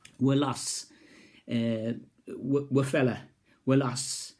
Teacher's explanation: in Geordie, the oo sound's being dropped, and ua is left